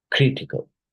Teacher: So the stress is in the first syllable, right? Not the second.